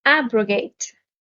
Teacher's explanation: abrogate stresses on the first syllable